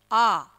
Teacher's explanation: आ विवृत स्वर होता है। यानी कि जिस स्वर के उच्चारण में हमारा मुख का घेरा सबसे ज्यादा बड़ा होता है